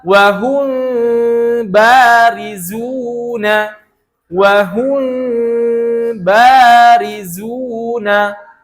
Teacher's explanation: Membaca ikhfa syafawi dengan membuka celah di bibir. Membuka bibir dengan ukuran yang tipis sedikit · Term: furjah